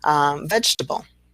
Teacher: Of course, our middle E is dropped in vegetable.